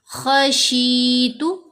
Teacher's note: خا کو موٹا پڑھنا ہے، شین کے نیچے زیر ساتھ یا ساکن، مدہ لیٹر، شین کو 2 حرکات کی مقدار لمبا کیا۔